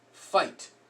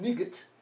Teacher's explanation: there's no G sound there's no a sound it's just I that's the only sound it's gonna make a long I sound